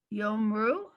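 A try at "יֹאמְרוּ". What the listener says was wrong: There's a vowel under mem.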